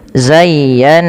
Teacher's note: Cara membacanya yang pertama ya dilembutkan zayya baru ditekan lagi ke nun zayyan. Nah, pada lafal nun yang bertasydid ini wajib ditahan bunyi nnya karena ia ada bacaan ghunah. Karena ada bacaan ghunah sehingga dipantulkan.